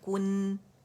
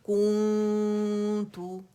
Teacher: اچھا میں نے کو بولا ہے, اور اس پہ میں نے لپس کو رول کیا ہے, کیف پہ دمہ ہے, لیکن نون پہ میں نے رول نہیں کیا. اگر اس پہ رول کروں گی تو اخفاء جو ہے وہ اس کی شکل بگڑ جائے گی.